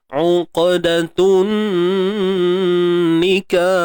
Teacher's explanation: Tun alif lam syamsiyah. Kemudian kena dengung dua harakat. Sebab apa? Sebab ada nun bersabdu.